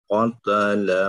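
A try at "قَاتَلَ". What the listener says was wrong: dua harokat pak qatala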